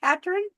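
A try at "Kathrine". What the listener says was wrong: It's Kathryn, which is Catherine. But here they say Katrin. No, Katrin. Like they leave the H sound off. It's not Catherine. It's Kath, like, yeah. And because Greenlanders are like Japanese people, the TH sound is not in their language. So they say Catherine.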